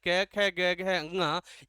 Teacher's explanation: इनका उच्चारण स्थान कहाँ से किया जाता है? कंठ से किया जाता है।